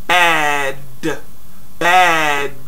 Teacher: And what I like about word bad, where you have that A sound, that vowel sound in there, that vowel sound is such an open mouth sound